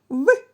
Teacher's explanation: вперед І поштовхом повітря з голосом швидко розкриваємо їх в Отже перешкоду для струменння повітря створюють губи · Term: звук в